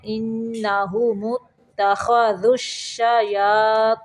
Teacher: ان نون مشدد پہ غنہ ہے